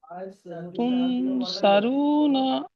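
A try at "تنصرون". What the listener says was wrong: সারু নয় বলেন সরু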